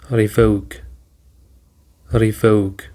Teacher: Revoke includes two syllables re and vogue. And the stress is on the second syllable